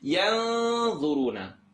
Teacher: I'm going to go ahead and make this tongue not touch, and it's going to be heavier because dha is heavy.